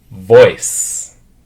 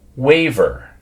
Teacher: Now, as we move into the V sound, you'll notice that the V sound is pronounced in the same place as the F sound. So the difference is that the V has the vibration in your throat.